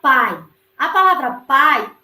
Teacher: o A é a minha vogal, porque tem uma tonicidade mais forte. O I, ele tem uma tonicidade mais fraca, então ele vai ser semivogal.